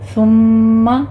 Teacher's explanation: ثم سا کو نرمی سے پڑھتے ہوئے میم مشدد ہے، یہاں پہ غنہ واجبہ کریں گے